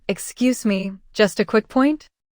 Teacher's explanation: That rising intonation is key. It turns an interruption into a polite request.